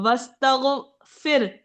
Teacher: थोड़ी सी ह की आवाज बस हल्की सी आएगी